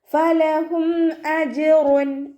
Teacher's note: ജീം കൽക്കലയുടെ letter ആയതുകൊണ്ട് നമ്മൾ full സുക്കൂന് കൊടുത്തിട്ട് ഉച്ചരിക്കുക · മീം സാക്കിനയുടെ നിയമമാണ് ഇവിടെ വന്നിട്ടുള്ളത്. മീം സാക്കിനയ്ക്ക് ശേഷം ഇവ്ഹാർ ചെയ്യാനായിട്ടുള്ള ഹംസ വന്നു, അപ്പോൾ മീം സാക്കിനെ നമ്മൾ വ്യക്തമാക്കിയിട്ട് ഉച്ചരിക്കുക